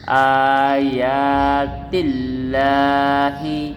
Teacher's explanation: لفظ اللہ کی لام سے پہلے زیر ہو تو یہ باریک پڑ جاتی ہے